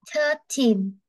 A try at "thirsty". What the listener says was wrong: No, no thirteen, thirsty. Thirsty. Không phải là tin nữa. Không phải là tin mà là tí. Em thấy cái chữ tơ y dài đúng không? Không phải là tơ ẻ đâu, mà là thớt tín đâu. Thirsty.